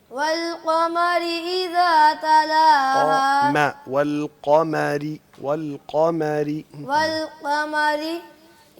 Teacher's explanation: वला कमारी की रा बारीक पढ़नी है